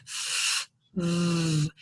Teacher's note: they're both continuent sounds, so they both keep going